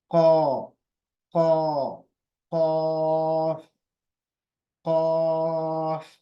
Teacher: अदा कैसे होगा? जबान का जो आखिरी हिस्सा है वो नरम तालू जो है, जो सॉफ्ट पैलेट बोलते हैं, ऊपर का जो मुंह का हिस्सा है उसको लगेगा, पूरा चिपक जाएगा।